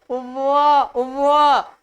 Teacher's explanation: दांत जो है ओठ पे आके बैठ जाते हैं, इसीलिए इसका उच्चारण है दंत और प्लस ओष्ठ से, तो बराबर बनेंगे दंतोष्ठ।